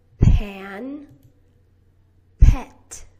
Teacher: You put your lips together and you push out with a brief little explosion of air. Your voice box is turned off.